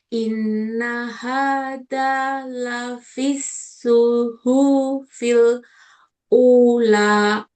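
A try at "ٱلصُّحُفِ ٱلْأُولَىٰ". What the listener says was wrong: Hu-nya kepanjangan. Suhufil ula. Pendek semua nak. Suhufi.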